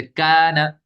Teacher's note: الف سے پہلے کاف ہے یہ باریک حرف ہے، الف بھی باریک ہو جائے گا